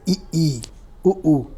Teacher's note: जिन स्वरों के उच्चारण में मुख द्वार सबसे कम खुलता है संवृत